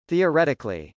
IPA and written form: θˌiɚˈɛtɪkəli (theoretically)